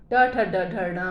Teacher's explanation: हमारी जीभ मूर्धा को स्पर्श करती है